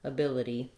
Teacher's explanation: our letter y says the tense e sound · you don't want a strong d that would sound strange but the flap is just a light little d